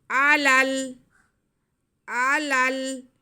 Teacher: پہلا لام دوسرے لام سے ملائیں گے